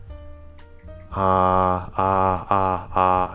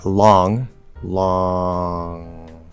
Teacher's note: it's the same sound same position i'm just letting a little more go through the nose on line so again with llama just a little bit nasal